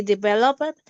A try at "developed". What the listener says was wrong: we don't say develop it we say developed okay developed like that